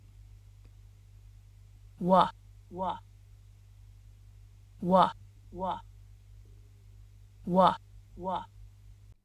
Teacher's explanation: the lips come together and the back of the tongue moves towards the back of the mouth, as it does for the vowel oo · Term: labial glide